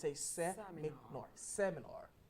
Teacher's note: The stress falls on the first syllable and say seminar.